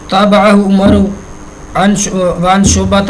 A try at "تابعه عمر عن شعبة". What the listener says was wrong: آپ نے عمر بنا کے آگے واہ پڑھ دی.